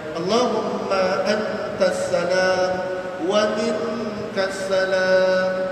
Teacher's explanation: Nun mati jumpa dengan ta, ikhfa, dengungkan ikhfa.